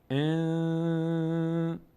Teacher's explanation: بعد از نون سین آمده، سین نه به هست که نون رو به میم تبدیل کنیم، نه حرف یرملون هست که نون رو به حرف بعدیش تبدیل کنیم، نه حرف حلقی هست که نون همونطوری که باید ادا بشه، بلکه قاعده اخفا صورت میگیره، نون از بینی ادا میشه، مقداری هم نگه میداریم صدا رو در بینی.